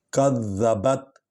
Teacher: کذبت، ذال کو ہلکا پڑھیں گے، نرم انداز میں پڑھیں گے تاکہ زے نہ بن جائے، اور ویسے وہ مشدد حرف ہے، اس کو کاف کے ساتھ ملا کر پڑھیں گے۔ کذبت، با جو ہے حرف شفوی ہے، ہونٹوں سے نکلتا ہے